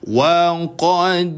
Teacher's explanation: dal sukun dipantulkan dengan pantulan yang sedang saja. Qalqalah syughro hukum bacaannya.